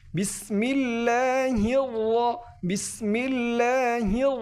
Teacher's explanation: এই রগুলো মূলত পুর হবে পুর একটু মোটা করে উচ্চারণ করতে হবে